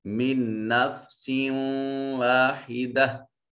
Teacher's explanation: سین کے نیچے تنوین ہے، سین منون، اور اس کے بعد واو حروف یرملون میں سے ادغام بالغنہ ہوگا